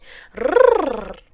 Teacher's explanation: prestem bem atenção que o R do espanhol é aquele R que bate